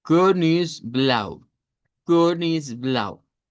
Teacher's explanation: Entonces, esa es una o redonda. Bueno, se va a pronunciar como una e redonda en realidad